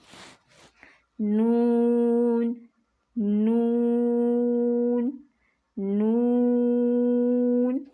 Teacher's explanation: اور اس نون کی آواز ناک میں بھی جائے گی، ناک کی طرف سے گزرے گی، ادھر سے ایسے ناک میں بھی جائے گی۔ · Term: نون کا مخرج